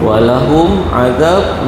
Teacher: syafawi ni maksudnya huruf yang keluar daripada mulut ah bibir ya · mim bertemu dengan ain izhar syafawi jelas